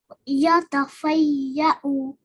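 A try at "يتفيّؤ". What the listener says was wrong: Brilliant. Good. Well done.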